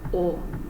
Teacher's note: you don't really pronounce the W it's just like oh